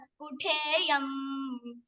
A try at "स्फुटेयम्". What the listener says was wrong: Spute is having a spute no. Spute is coming. Th sound is coming. Te, alpa prana.